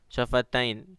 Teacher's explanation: تو نون میں زیر تھا لیکن وقف میں ساکن ہو گیا، تو شفتین اس میں مد آیا، یہ مد لین عارض ہے، ٹھیک ہے۔